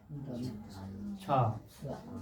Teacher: छ तालु से बोला जाता है